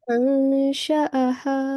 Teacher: Alif is carrying a separate fatha. So you don't do alif madda here. You do only for 1 second.